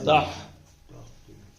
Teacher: یہ ہا جو ہے یہ حلق کے اوپر کے حصے سے نکلتی ہے